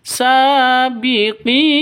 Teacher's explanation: Dan setelah mad asli itu ada huruf hidup. Nah, mad asli yang diakhiri huruf hidup terus berada di waqaf, itu namanya mad arid lis sukun, dan panjangnya boleh 2 ketukan, boleh 4 ketukan, boleh 6 ketukan atau 6 harokat